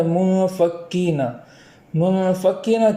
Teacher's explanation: منفکین کے اندر یہاں نون کے اندر اخفا کریں گے اور وہاں ایک الف کے برابر تاخیر کریں گے